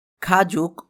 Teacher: এখানে গিয়ক শব্দটি আরেকটা শব্দের নিচে বসাতে গ এর মতো উচ্চারিত না হয়ে ক এর মতো উচ্চারিত হয়েছে